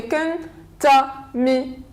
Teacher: so we stress on the third syllable from the end